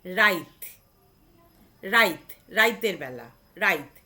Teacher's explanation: কিন্তু হস্যইটা উচ্চারিত হওয়ার কথা ছিল তয়ের পরে, সেই হস্যইটা উচ্চারিত হচ্ছে তয়ের আগে। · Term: অপিনিহিতি